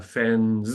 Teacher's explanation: we say the fens with z, because that's the plural rule. But we can say the word fence.